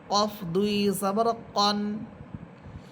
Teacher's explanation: কফ হবে মোটা করে কফ, জিহ্বার গোড়া উপরে তারও সাথে লাগবে।